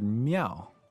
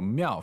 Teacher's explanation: Alright, so 庙, fourth tone, means temple.